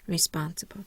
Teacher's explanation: My primary stress is on the second syllable spawn. I have no secondary stress. · I have no secondary stress. I have 2 schwa on my second last syllable and my last syllable. Remember, BLE is usually schwa anyway.